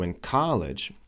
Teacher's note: he's reducing the in to n so because it's not an important syllable